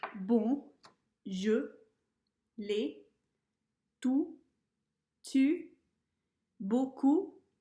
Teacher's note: You'll notice the vowels sound very pure in those words.